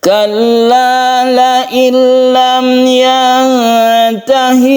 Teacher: nun mati bertemu dengan lam, ini kita baca idgham bila gunnah